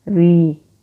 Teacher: را یہاں پر نیچے زیر ہے را کے باریک پڑھیں گے